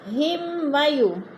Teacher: میم ساکن کے بعد واو آ گئے تو ادھر اظہار شفوی، غنہ نہیں کریں گے